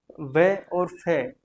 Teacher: इनका उच्चारण दंत और ओष्ठ दोनों ही होता है। इस इनको दंतोष्ठ व्यंजन भी कहा जाता है। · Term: दंतोष्ट व्यंजन